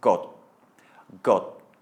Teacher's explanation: Your mouth will form the shape, but it will not follow through with a burst of air. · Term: unaspirated